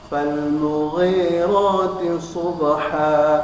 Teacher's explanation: Huruf isti'la maka ditebalkan karena dia hurufnya huruf tebal tapi berharokat kasrah, maka kadar dari tebalnya dikurangi, ya. Kemudian ada huruf so, maka huruf tebalnya maksimal, yaitu dimonyongkan mulutnya.